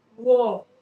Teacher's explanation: दंतोष्ठी मतलब दांत और ओठ दोनों को मिला के बनेगा।